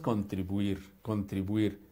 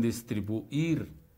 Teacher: nunca se rompe siempre forma diptongo